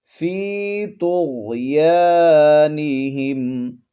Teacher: یا حرف مدہ ہے، ایک الف کی مقدار کھینچیں گے، تو اور غین جو ہے یہ حروف مستعلیہ میں سے ہیں، ان کو آپ نے پر کر کے یعنی موٹا کر کے پڑھنا ہے۔